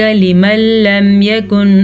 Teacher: غنے بغیر ہم نے ان کو آپس میں غنے کے بغیر ملا کے پڑھنا ہے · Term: ادغام بلا غنہ